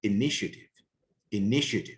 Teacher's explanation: so the stress is on the second syllable